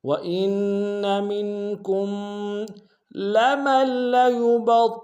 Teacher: وَإِنَّ مِنْكُمْ لَمَن لَّيُبَطِّئَنَّ، لمل میں میم کو لام کے سامنے آئیں گے، لام کے اوپر تشدید زور دیں گے، اور با کو طوا کے سامنے آئیں گے، طوا کو موٹا ادا کریں گے، طوا کے اوپر تشدید زور دیں گے، حمزہ کو نون کے سامنے آئیں گے، تشدید زور دیں گے۔